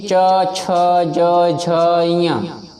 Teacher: हमारी जीवा ताल में स्पर्श कर रही है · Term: चा वर्ग